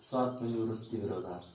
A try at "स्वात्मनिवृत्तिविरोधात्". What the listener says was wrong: स्वात्मनि वृत्ति विरोधात्, लग गया, स्वात्म इधर लेना और निवृत्ति उधर लेना, ऐसा नहीं लग गया, चलो भाई, एक शब्द भी इधर उधर जाता है तो गड़बड़ हो जाती है, लग गया।